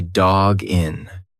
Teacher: it's like the second part of that sound is gin. You've put the G in front of the next word. It's one sound.